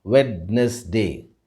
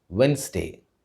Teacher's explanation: Remember, the D is silent in this word. · அந்த புதன்கிழமையை நம்ம ஆங்கிலத்தில் வென்ஸ்டே அப்படின்னு சொல்லுவோம். In India, we have a tendency to break this word into three syllables and pronounce it as Wednesday. But the right pronunciation for this word is Wednesday.